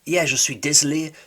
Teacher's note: he doesn't pronounce the O in je suis désolé